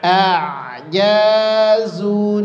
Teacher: Nunnya tipis, kho-nya tebal.